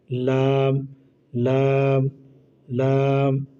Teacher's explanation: লাম হচ্ছে জিহ্বার আগার কিনারা সামনের উপরে দাঁতের গোড়ার সঙ্গে লাগাইয়া, জিহ্বার আগার কিনারা সামনের উপরে দাঁতের গোড়ার সঙ্গে লাগাইয়া।